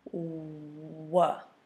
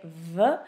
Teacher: And I know the temptation is to say V. So with the V sound, your teeth are actually touching your bottom lip. For the W sound, your teeth do not touch your lip. You just round your lips and you say W.